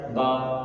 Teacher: बा का मखरज दोनों होंठों के मिलाने से बा अदा होता है